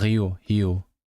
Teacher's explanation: So in Portugal, the r is realized as a r, but in Brazil, the r is realized as a h.